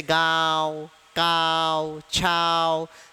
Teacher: अनुनासिक मतलब ही चंद्र बिंदु वाले शब्द जिसमें आपकी नाक में क्या हो रहा, कंपन उत्पन्न हो रहा, नाक में किसी प्रकार का वाइब्रेशन या किसी प्रकार का सुरसुरी पैदा हो रही, नाक के माध्यम से आप इसको बोल रहे हो, इसलिए ये अनुनासिक कहलाया।